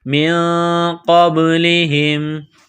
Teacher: نون ساکن کے بعد قاف ہے، حروف اخفا ہے تو نون ساکن پر غنہ کریں گے، آواز ناک میں چھپائیں گے · میں چھپائیں گے، قاف کو با کے ساتھ پلس کرنا ہے، با ساکن ہے تو یہاں پر قلقلہ کریں گے